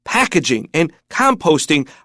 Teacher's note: Packaging and composting are all words that need to stress on that first syllable.